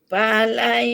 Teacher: Tidak lagi bunyi itu nun mati. Terus kasih masuk kepada ya. Falayak. Itu idgham ma'al gunnah.